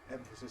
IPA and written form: ˈemfəsɪs (emphasis)